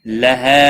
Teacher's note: مد منفصل ہے، 3 الف کے برابر کھینچ کر پڑھیں گے۔